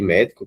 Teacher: Veja que a antepenúltima sílaba está sendo acentuada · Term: proparoxítona